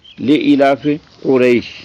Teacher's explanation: یہ جو قاف ہے یہ پر ہے نقطوں والا، اور اس کے مقابلے میں دوسرا کاف جو ہے وہ باریک ہے